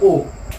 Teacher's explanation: कंठोस्थ है, जो कंठ और होंठ दोनों को लेकर करता है। तो ये ओ आपने सुना होगा कई बार, ओ जो होता है कंठोस्थ है, कंठोस्थ ओ, ठीक है।